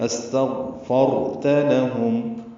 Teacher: تا کو جلدی ادا کرنا ہے، لام جلدی باریک پڑھیں گے